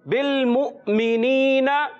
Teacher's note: جی ہاں, اس واو کے اوپر جو یہ حمزہ ہے اس کے اوپر جزم ہے, تو اس حمزہ کی ادائیگی کریں گے, واو نہیں پڑھا جائے گا. اور پیارے بچے اس کو تھوڑا سا جھٹکے کے ساتھ ادا کرتے ہیں. حرف مدہ ایک الف کھینچ کر ادا کریں گے. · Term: حمزہ ساکنہ